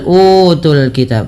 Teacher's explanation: panjangkan u dua harakat karena ia mad badal